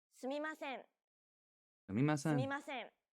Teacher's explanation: a syllable occupies the same length of time sumima Sen Ator notice how each character is pronounced for an equal amount of time no character takes up more or less time than the other characters every character is valued equally and is pronounced evenly throughout English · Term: more timed language